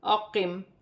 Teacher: وقف کی صورت میں زیر گر جائے گی اور میم ساکن ہو جائے گی۔